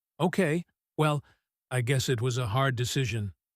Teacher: Her voice goes up at the end, making it sound like a gentle question. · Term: softening phrase